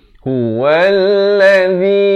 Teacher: zi di hujung lidah itu keluar sekejap. Zi 4 atau 5 harakat.